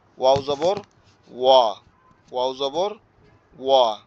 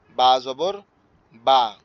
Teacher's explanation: ওয়াও উচ্চারণের সময় ঠোঁটটা একটু গোল হবে, আর আপনার বা উচ্চারণের সময় স্বাভাবিক থাকবে। বা উচ্চারণের সময় স্বাভাবিক থাকবে, লেগে থাকবে।